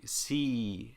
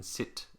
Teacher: the vowel in C is longer than the one the e in sit · Some dialects in general will say see and then sit. And the vowel in see is longer than the I in sit.